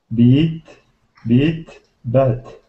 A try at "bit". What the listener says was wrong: I heard beat, beat. Try making those two sound different. So let's get beat here, but we want this one to sound like bit. So this is how they sound. Beat, bit, bet.